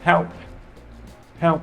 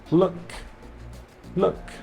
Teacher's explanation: O P não vibra aqui na hora que eu falo. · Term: voiceless